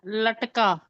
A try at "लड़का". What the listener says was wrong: लड़का। हाँ, लड़का। नहीं नहीं, लड़का रा है, लड़का।